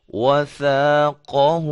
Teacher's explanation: یہ ثا ہے، اس کے اندر سیٹی کی آواز نہیں پیدا ہونی چاہیے